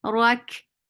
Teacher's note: Ra is heavy for fatha when you just attach with kaf. Kaf will get sifa of hams.